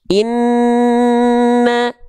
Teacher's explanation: Ini hukum tajwidnya namanya adalah gunnah. Nunnya harus ditahan gunnah, dengung 2 harokat.